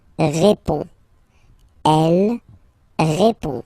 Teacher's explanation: Il répond. So, final D is not pronounced. You only have this on nasal sound at the end.